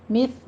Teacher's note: تا پر سیٹی کی آواز نہیں صرف ہمس ہوگا ، مثل الذی ذی میں یا مدہ ہے، 2 کاؤنٹ کریں